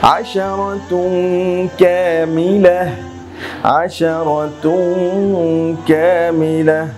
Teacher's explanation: এখানে দেখুন তানবিন দুই পেশ এসেছে, এরপরে কাফ এসেছে, কাফটা মূলত ইখফার হরফ, অতএব এটা হবে ইখফার গুন্নাহ।